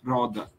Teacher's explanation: Na Itália mesmo, pelo menos na região central, eles usam esse, roda. É uma vibração só e não duas. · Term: vibrante simples